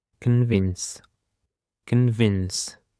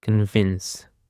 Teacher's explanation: The stress is on the second syllable. Convince. Convince is a verb and it means to make them believe or accept something is true, usually by giving reasons, facts, or strong arguments.